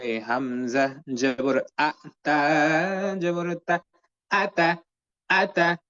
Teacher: আলিফে যখন জের জবর পেশ অথবা সুকুন তাসতিদ পাওয়া যায় আলিফকে তখন হামজা বলা হয় হামজা অক্ষর হলকের প্রথম থেকে শক্ত করে পড়তে হয়